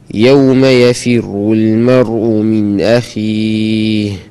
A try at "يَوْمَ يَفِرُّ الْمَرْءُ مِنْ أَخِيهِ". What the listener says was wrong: خمل الراء. يفر الراء مفخمة.